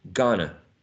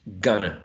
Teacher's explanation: And we may see that the e was elided, it disappeared, and that which is a nasal velar sound, because of the influence of the following sound t, turned into still nasal, but this time alveolar, right? And t was elided because we don't hear in the word gonna the sound t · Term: elision of t